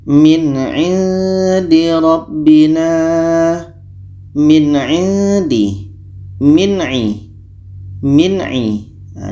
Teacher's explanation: mati bertemu dengan a ini hukumnya izhar halq dibaca jelas apa Yang jelas Nun jelas a jelas dan tidak ada dengung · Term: izhar halqi